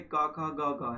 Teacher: अब इसमें जैसे का, खा, गा है, इनका क्या रहता है, जीवा का जो पश्च भाग है उसका कोमल तालु से स्पर्श होता है, तो आपके ये स्पर्श व्यंजन कहलाएंगे।